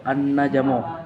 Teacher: An-najmu gunna musyaddadah karena ada huruf nun yang bertasydid. Cara membacanya masuk dengan mendongong.